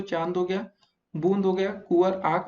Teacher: अनुनासिक में दोस्तों उच्चारण में वायु नाक और मुख दोनों से निकलती है